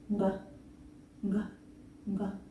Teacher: Notice that I'm actually just saying only one sound. The sound comes from the very back of my mouth. G. It should not scratch.